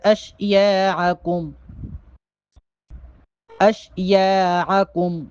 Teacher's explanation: عین کو حلق سے نکالیں گے.